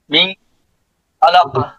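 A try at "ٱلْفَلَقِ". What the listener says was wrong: হ্যাঁ এখানে কলকলা হবে তো, হ্যাঁ কাফ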